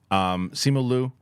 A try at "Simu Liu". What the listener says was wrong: You said his name so fast. Simu Liu. Yeah, Simu Liu.